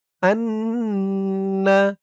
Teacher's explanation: ওয়াজিব গুন্নাহ, কারণ হরকতের পরে নুনের উপর তাসদিদ আসছে। হামজা নুন জবর আন, নুন জবর না, আন্না।